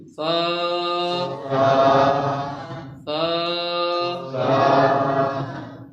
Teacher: بڑے آرام کے ساتھ اس کو ادا کرنا ہے، بڑی نرمی کے ساتھ ادا کرنا ہے۔ اس میں جھٹکا کوئی نہیں ہے، سختی نہیں ہے، سیٹی کی آواز نہیں ہے، بالکل بڑے پولائٹ نرمی انداز نہیں۔ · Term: ثا کا آواز